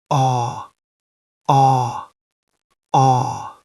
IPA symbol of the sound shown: ɔː